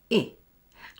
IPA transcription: ɪ